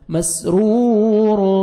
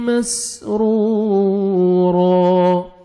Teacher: را کو ضمہ ہے، را کو موٹا کر کے پڑھنا ہے، اور واو مدہ بھی ہے، واو ساکن سے پہلے ضمہ، را کو اپنے کھینچنا بھی ہے اور را کو موٹا بھی کرنا ہے.